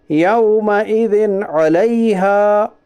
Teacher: دو زیر کی تنوین کے بعد حروف حلقی کے 6 حرفوں میں سے عین ہے، اس لیے اظہار حلقی ہوگا. یعنی دو زیر کی تنوین کو ظاہر کر کے بلا گنا کے جلد پڑھیے، اسے اظہار کہتے ہیں.